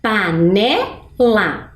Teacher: panela eu até dei né uma pista não tem acento mas a sonoridade é mais forte na sílaba ne